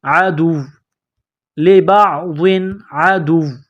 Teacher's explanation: عدو عدو واو میں سختی کرنی ہے. جب یہاں سٹاپ کریں گے، وقف کریں گے تو واو کو سائلنٹ کریں گے